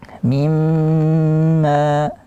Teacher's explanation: Kemudian mim, nun, sukun berjumpa dengan mim, itu idgham bi gunnah. Mimma, dia gunnah akmal, durasinya panjang